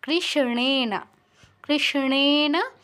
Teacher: মূর্ধন্য তো উচ্চারণটা মূর্ধায় হবে মূর্ধন্য উচ্চারণটা কিন্তু দন্তন্যর মত করলে হবে না বাংলায় যেমন কৃষ্ণ বলি ওরকম করলে চলবে না কৃষ্ণেনা কৃষ্ণেনা সংস্তুতে